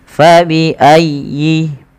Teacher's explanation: tekan ya-nya tapi dengan lembut karena ya termasuk huruf lin